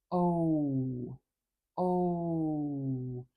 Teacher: it's two vowel sounds that Glide quickly one to the next · the quality of that vowel is changing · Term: diff thong